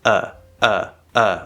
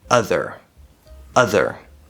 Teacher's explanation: it's a nice open sound where it sounds very similar to what we call the schwa but it's very clearly enunciated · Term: upside down v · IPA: /ʌ/